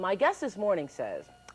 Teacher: Oprah Winfrey's use of monophthongal ah in place of mainstream American English I